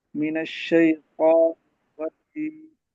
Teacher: अब अच्छा जो है ना साथी, इस पर थोड़ा तवज्जो करें कि मीना शैता, जब पोए को कहेंगे ना मोटा, होंठों गोल नहीं करना, वाह तो रा को पढ़ते हुए होंठों गोल नहीं करना